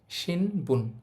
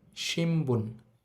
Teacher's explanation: যেহেতু নয়ের পর বি লাইনের বর্ণ আছে, নয়ের উচ্চারণটা ম এর মতো হবে। অ্যাকচুয়ালি এটার উচ্চারণ হবে শিমবুন।